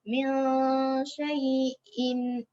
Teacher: min kita baca dengan sembunyi samar-samar.